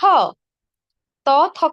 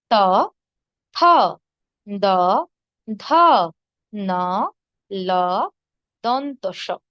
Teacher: দেখুন ত, থ কিন্তু আমাদের দাঁতের গোড়া পাশাপাশি দাঁতে স্পর্শ করে উচ্চারিত হচ্ছে। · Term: দন্তধ্বনি